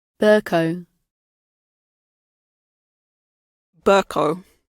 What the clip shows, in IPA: ˈbɜːkʌu